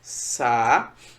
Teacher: O A e o U formam um hiato. E nesse hiato, um dos elementos do hiato é a sílaba tônica, que é justamente um U. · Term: hiato tônico em U